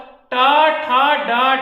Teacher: तालु के आगे आओगे तो मूर्धा, मूर्धन्य